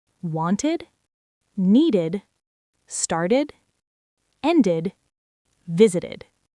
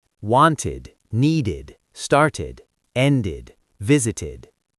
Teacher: And after t or d, it's id, an extra syllable. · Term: id sound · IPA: /ɪd/